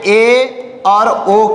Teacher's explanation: अर्ध समृद्ध वह स्वर है जिनका उच्चारण करते समय मुख द्वार आधा बंद और आधा खुला रहता है